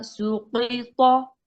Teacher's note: قاف اور طا دونوں موٹے، سین صرف باریک ہوگا